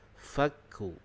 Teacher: kaf ini makhrajnya adalah di pangkal lidah, berdekatan dengan anak tekak. Jadi bunyi kaf itu keluarnya di situ. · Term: huruf kaf